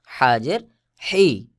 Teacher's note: হলকের মধ্যখান হইতে চাপ দিয়ে উচ্চারণ হবে